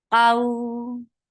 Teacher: Qaw, 2 counts long because this is harfleen.